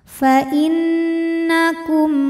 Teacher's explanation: Kemudian ada hukum idhar syafawi, sebab ada mim sukun yang menghadapi huruf selain mim dan ba, yaitu huruf ghain. Maka mim sukun ini kita bunyikan dengan idhar atau jelas. Fa innakum gha dihukumi dengan mad tabi'i muqaddar karena huruf ghain berbaris fathah berdiri atau fathah panjang.